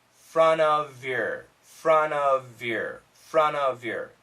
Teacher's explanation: got another v v sound and we have a y now the Y is almost like a vowel so usually the V will connect